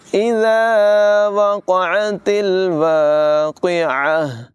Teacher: الف مدہ کو تقریباً 1 سیکنڈ کے مطابق لمبا کر کے پڑھتے ہیں